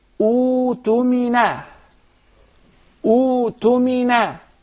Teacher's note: You don't pronounce the hamza. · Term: maddul badal